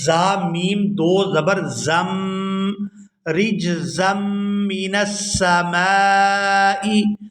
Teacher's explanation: یہاں زا کو میم مشدد کے ساتھ ملائیں گے تو غنہ کریں گے